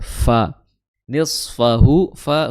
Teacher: Fa adalah di ujung gigi seri atas bertemu dengan bibir bawah bagian dalam ya